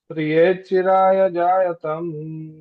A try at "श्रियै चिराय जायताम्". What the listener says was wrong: श्रियै चिराय जायतान्। जायतान्, जायतन मत लीजिए, जायतान्।